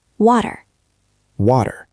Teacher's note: That is good for the beginning of words, but in American English, when a T is in the middle of a word between two vowels, it changes. It stops being a sharp T. It becomes a soft, quick D sound. Think of the word water. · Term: T-flap